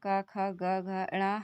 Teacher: ये हमारे कंठ से बोले जाते हैं, इसलिए इनको हम कंठ वर्ण बोलते हैं